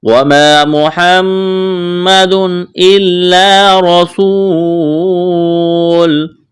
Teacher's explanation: محمد میم مشدد ہے، آواز ناک میں چھپائیں گے، غنہ کریں گے۔ تنوین کے بعد حروف حلقی میں سے حمزہ ہے تو تنوین پر غنہ نہیں کریں گے، آواز ناک میں نہیں چھپائیں گے، اظہار کریں گے